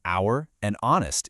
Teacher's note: the H in hour and honest is completely silent, leaving us with a vowel sound which demands an.